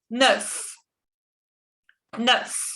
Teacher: La EU en este caso se pronuncia como la schwa en inglés, es E. E, como la E del alfabeto.